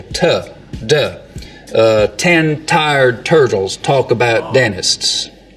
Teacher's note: sounds so that there's a lot of surface contact t d we just use the narrow edge of the tongue so it's a more focused contact area